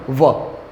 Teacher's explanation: વ ઉપરના દાંત છે નીચેના ઓટને સ્પર્શે છે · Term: દંતોષઠ્ય, દંતોષ્ઠ્ય